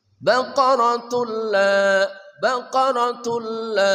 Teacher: awalnya baqaratun la dimasukkan menjadi baqaratul la